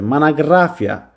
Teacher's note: Vurğu üçüncü hecanın üzərindədir · Monografiya. Vurğu 3-cü hecadadır. · Bir dodaqlanan deyir. Burda dodaqlanan sait qalmadı. Bütün o saitləri A-ya çevrildi.